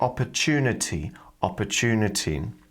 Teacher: with the TU one more time we've got this CH sound